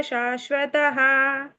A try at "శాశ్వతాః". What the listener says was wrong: శాశ్వతాః. నాకు దీర్ఘం ఉంది మాతాజీ.